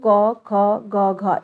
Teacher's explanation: जीभ के पिछले भाग से कोमल तालु स्पर्श करता है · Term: कंठ व्यंजन